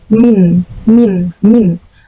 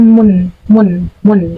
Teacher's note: harakat yang termasuk ke dalam bagian dari harakat tanwin itu seolah-olah kayak ada Nun matinya